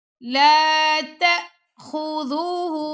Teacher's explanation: حمزہ آ گیا تو یہاں پہ ہم نے جھٹکا دے کے پڑھیں گے